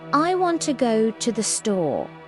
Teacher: The little words I, to, the are said quickly and quietly.